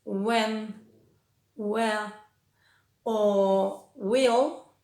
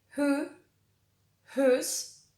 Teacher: Cuando decimos where, when, will, lo que no pronunciamos es la H, y en who, whose, whole, lo que no pronunciamos es la W